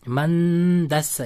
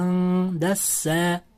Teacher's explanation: nunni d ni chiqadigan joyga yashirib, g'unna bilan o'qilyapti